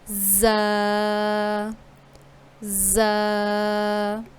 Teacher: ان کو ادا کرتے وقت آواز سیٹی کی طرح تیزی سے نکلتی ہے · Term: حروف صفیریہ